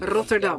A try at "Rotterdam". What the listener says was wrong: You got to roll your R's. haven't you? You got to roll your R's here.